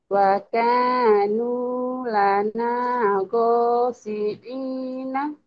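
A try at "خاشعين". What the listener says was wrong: bukan go tapi kho itu Maya ketemu. Iya kho. Kho. Bukan go. Waka wakanu lana khashi'ina.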